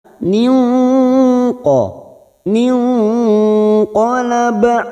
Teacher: cara membacanya dengan menyamarkan bunyi nun sukun karena di sini bertemu dengan nun sukun nun sukun bertemu Q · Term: Ikfa Hakiki